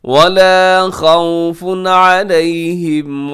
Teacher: خوفن پہ تنوین کے بعد عین اظہار کیجیے گا، غنہ نہیں کرنا، تیزی سے پڑھنا ہے